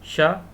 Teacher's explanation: तो ये मूर्धा से बोला जाता है, मूर्धा से शा। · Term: मूर्धन्य शा